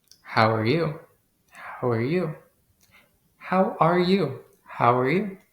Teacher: notice that we use a rising intonation at the end of the questions to show that we expect an answer